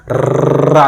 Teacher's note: तो लुंठित यानी कंपन जैसी ध्वनि आती रहती काफी देर तक जैसे ररा करें तो क्या होती है कंपन जैसी जीभ में आती है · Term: लुंठित व्यंजन